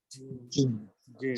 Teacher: জিহ্বার মধ্যখানটা উপরের তালুর সাথে একদম পরিপূর্ণভাবে লাগিয়ে · জিহ্বাটা একদম তালুর সাথে লাগিয়ে হলো জিম